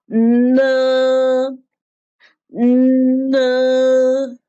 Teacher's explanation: The n is a nasal sound. That is to say, when pronouncing, the airflow will resonate in your nasal cavity. Touch your nose with your finger.